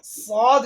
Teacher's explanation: ये दोनों दांत जब आपस में मिलेंगे तो उसके पीछे हमारी जबान की ये जो नोक है वो मिलेगी। तो जबान की नोक को हम दोनों दांतों के अंदरूनी किनारे से जब लगाएंगे तो अदा होगा सौद। सौद को हम हर हालत में पूरी यानी तफखीम करके पढ़ेंगे।